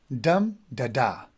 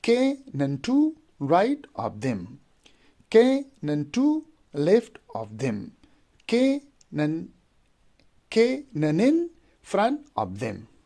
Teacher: So we have here in dactyl we have 3 syllables. The first one is stressed and the last 2 are unstressed.